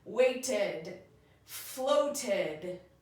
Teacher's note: The first way it can sound is to say ed, or sometimes it sounds more like id. It's a lazy schwa, meaning that it's an unaccented syllable. And so the vowel sound isn't perfect, but it's going to definitely be a vowel sound with that D.